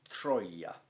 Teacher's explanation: the single consonant that follows that vowel, is behaving as if it were a double consonant